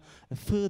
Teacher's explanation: bizim Men Of türleri üzerine mesela FI diyoruz engelleme nerede gerçekleşiyor Alt Dudak ve üst diş Hani labiodental bir ses ortaya çıkmış oluyor